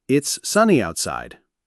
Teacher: your pitch will start at a mid-level, perhaps rise slightly on the main stressed word, sunny, and then fall at the very end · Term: Statement intonation, falling